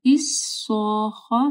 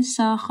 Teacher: صاد کو ایک تو موٹا پڑھنا ہے، ساخہ نہیں، صاخہ میں دیکھیں پھر مد ہے اور اس کے بعد خا ہے اور خا کے اوپر شد ہے.